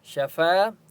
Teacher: الف مدہ ہے، فا کو ایک الف کی مقدار کھینچ کر پڑھیں گے